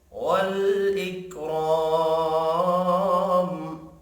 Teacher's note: والاکرام را زبر کی وجہ سے پر پڑھیں گے، الف مدہ کو 1 الف کے برابر کھینچ کر پڑھیں گے، وف کی صورت میں میم ساکن پڑھا جائے گا۔